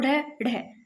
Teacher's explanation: कि जीभ के मुर्दा पर मारने से उत्पन्न होता है और द्व स्पर्श यानी कि जीभ के दो बार स्पर्श करने से उत्पन्न होना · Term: उत्क्षिप्त व्यंजन